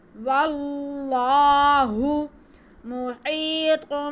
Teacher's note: واللہ، واللہ محیط، میم پہ پیش، ہا کے نیچے زیر، یا ساکن، یا ساکن سے پہلے زیر تو یا مدہ، اس کو ہم کھینچیں گے. ہا ہلکی، حرف کے حلق کے سینٹر سے ادا ہوگی.